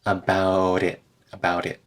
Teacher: about that t turns into a tap